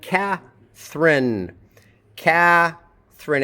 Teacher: Catherine, it's aspirated at the beginning of a syllable.